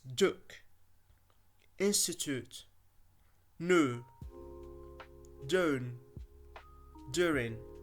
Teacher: be careful that it does not become sh like CH